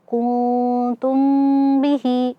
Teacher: Kuntum nun sukun ketemu dengan ta. Nah di sini ikhfa ya dibaca samar-samar dan juga ada ee dengungnya ya